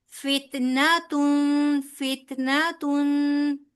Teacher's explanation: बिबाबीला लंबा नहीं होगा, ठीक है। इसी तरह फित नहीं कहना, ता को हिलाना नहीं है।